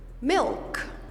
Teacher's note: sometimes have a different quality we call this a dark l when the l is before another consonant like milk you see i don't say le i say o so i bring it a little bit back